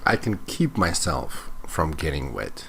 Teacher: notice that he's talking quite mechanically it's like none of the words flow into each other